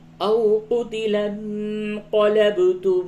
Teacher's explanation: نون ساکن کے بعد قاف اخفا ہوگا، با میں قلقلہ ہوگا